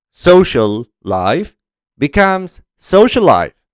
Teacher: This is an example of fast linking, where the L sound is omitted from social, making it sound like social life.